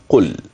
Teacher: لام ساكنه اذا القاف المضمومه واللام الساكنه قل هكذا مع مراعاه ان اللام عند سكونها لا تقلقل او تحرك باي حركه قل مع بيان انها متوسطه لا تتشدد في نطقها قل بكل · القاف مضمومه وهي معي مفخمه فلا تاتي كافا بعدها لام ساكنه اذا القاف المضمومه واللام الساكنه قل هكذا مع